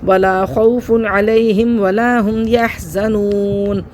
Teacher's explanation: یہ دیکھیں یہاں پہ دو پیش کی تنوین کے بعد عین آ رہا ہے حروف حلقی میں سے، حمزہ، ہا، عین، ہا، غین، خا میں سے عین آ رہا ہے تو یہاں پہ ہم اظہار کر کے پڑھیں گے، غنہ نہیں کریں گے